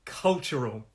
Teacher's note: The stress is on the first. So it's 3 syllables.